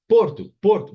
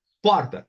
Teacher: Porto, som fechado. Porta, som aberto.